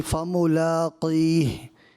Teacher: یہاں حرف مستعلی ہے قاف نا، اس کو پر کرنا تھا، یعنی موٹا پڑھنا تھا، آپ نے باریک کر دیا